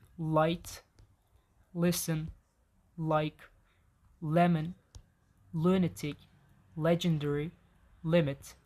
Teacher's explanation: it is pronounced by putting the tongue behind the front teeth. This is clear L.